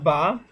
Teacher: উচ্চারিত হবে ওয়াও বা অর্থাৎ ঠোঁটের যে ভিজা অংশ সেই সেই দুই ঠোঁটের ভিজে অংশ একসাথে লাগিয়ে উচ্চারিত হবে বা